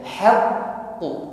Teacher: Pada kalimat haqqu, qafnya tasydid, ditekan membacanya. Saat menekan huruf qaf, suara hurufnya tertahan. Ya, inilah sifat syiddah.